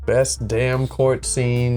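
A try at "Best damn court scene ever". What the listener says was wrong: You gotta do more of a French Canadian, a little more nasal, I think. The French, you know, you got a little bit of that in there.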